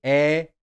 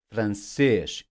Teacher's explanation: the sound of the acute accent mark is more open than the circumflex